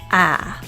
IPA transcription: æ